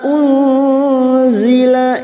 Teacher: Nun sukun bertemu zain ikfa hakiki kita samarkan bunyi nun sukun dan mendengung selama 3 harokat.